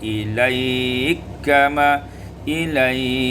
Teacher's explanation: idghamul kaf fil kaf, diidghamkan kaf pada kaf menjadi ilaikama, ilaikama, qasar, tawassut dan isba'.